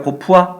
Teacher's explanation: 이 글자의 어간은 쓰까지인데 어간에 으가 있어요. 이렇게 이 뒤에 모음으로 시작하는 이렇게 어미가 오게 되면 으가 탈락합니다. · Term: 으 탈락